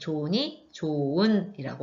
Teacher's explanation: 세 번째로는 히읗 탈락이 있어요. 용언이 활용할 때 어간의 끝소리 히읗이 이렇게 모음으로 시작하는 어미, 접사 앞에서 탈락하게 되는데